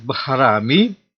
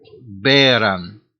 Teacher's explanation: Sanskrit bharami corresponds to Gothic beran, to bear, infinitive adverb to bear. Here, Sanskrit aspirated bh corresponds to Gothic b without aspiration